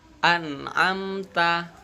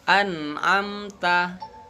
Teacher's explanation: Nun dan mim itu bukan huruf qalqalah, jadi tidak dipantulkan. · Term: bukan bacaan qalqalah